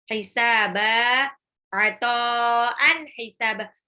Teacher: to'nya itu mad wajib mutasil lagi 6 harokat ya, karena ketemu hamzah, harokat alis ketemu hamzah dalam satu kata.